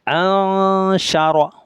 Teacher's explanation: ইখফা করতে হবে, অর্থাৎ আদা গুন্না করে পড়তে হবে